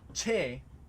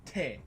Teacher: the main difference between the northern dialect and the IA dialect is that there's no palatalization